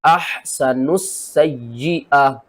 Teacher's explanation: سین کو اوپر سختی کرنی ہے 2 بار پڑھنا ہے، یا کے اوپر سختی کرنی ہے 2 بار پڑھنا ہے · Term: مشدد